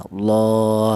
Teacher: dibaca panjang satu alif atau dua harakat atau dua ketukan atau mad thobi'i panjangnya dua ketukan ya Allah.